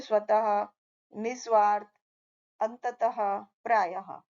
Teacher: विसर्ग को बोलने में हल्के से ह की आवाज निकलती है